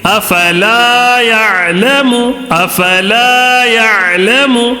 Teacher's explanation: الف مدہ کو کیسے پڑھیں گے؟ تھوڑا سا کھینچ کر پڑھیں گے.